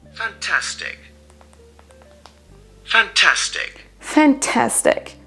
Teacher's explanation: Donc là on a fan, une apostrophe, tastic. Donc l'accentuation se trouve sur la deuxième syllabe, sur le ta, fantastic. · Vous entendez bien que donc la deuxième syllabe est accentuée plus que les deux autres.